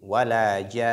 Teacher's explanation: nous devons non seulement accentuer nun, mais aussi nasaliser avant de s'arrêter